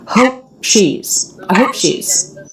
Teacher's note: my lips come together for the pee but I skip the release rather than that escape of air we go right into the sh consonant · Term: stop consonant